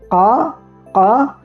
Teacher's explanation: Kemudian qof langit-langit paling belakang. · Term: qaf